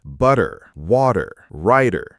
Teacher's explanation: We just make a quick tap of the tongue on the alvea ridge. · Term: flat T, flap T